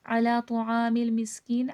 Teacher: مس میں صفیر واضح کریے گا